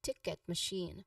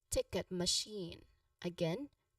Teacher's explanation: for machine the stress is on the second syllable